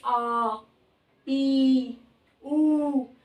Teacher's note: बोलने में 2 गुना समय लगे जिसमें वो दीर्घ स्वर, जैसे आ ई ऊ, थोड़ी लंबी आवाज निकलती है।